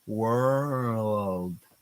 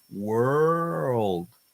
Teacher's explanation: for the R, it's from the back, curving back, so you can actually use a pencil to mark the position.